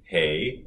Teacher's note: it's an actual diphthong so you have two different vowel sounds